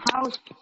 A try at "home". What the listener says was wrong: Home. Home से ending भी आपका O sound से आए. House में आपका U sound आ जा रहा है.